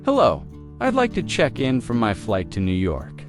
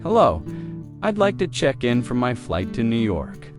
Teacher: Notice how check-in sounds like one smooth unit, no pause in the middle.